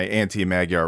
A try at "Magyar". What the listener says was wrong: It's actually pronounced Magyar. Magyar. I had to learn this because I don't speak Hungarian, but GY in Hungarian is not Gya, it's J.